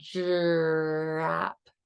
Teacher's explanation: So we have the TR and the DR blends, which are really affricate blends · you have that palatal area of the tongue, and also your lips are protruded in kind of an angry dog teeth manner, which really does help with the R.